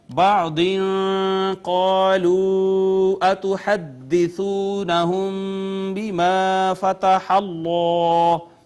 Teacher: بعض قالوا اتحدثونهم بما فتح اللہ اخفا کیا، یہاں پہ قاف حروف مستعلیہ میں سے پر کر کے پڑھا، الف مدہ، پھر مد منفصل اور اس کے بعد واو مدہ ہے، میم ساکن کے بعد با آ گئی، اخفائے شفوی ہو گیا، الف مدہ.